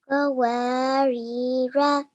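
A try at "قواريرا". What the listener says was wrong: Excellent. Good. Well done.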